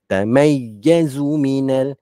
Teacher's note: Zu jangan panjangkan, zu pendek, tidak ada huruf mat.